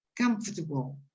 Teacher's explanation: If you stress it correctly on the first syllable on the left, the sound, the syllable in the middle almost disappears. Sometimes it disappears completely.